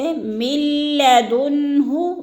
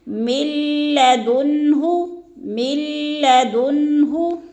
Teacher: اسی طرح تیسری مثال ہے من لدنہ، اس کو بھی من لدنہ نہیں پڑھنا یعنی غنہ نہیں کرنا، یعنی بغیر غنہ کے ادغام کرنا ہے، جیسے من لدنہ، بالکل بھی ناک میں آواز کو ہم نے نہیں لے کے جانا